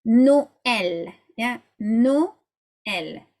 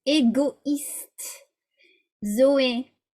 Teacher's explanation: You actually separate the two vowels into two syllables. So it's the opposite of diphthongs. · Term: diaeresis